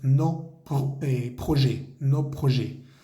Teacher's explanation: En este caso la palabra que sigue es proyectos, que comienza por P. Entonces no hacemos ninguna conexión